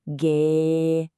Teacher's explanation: first tone, high and level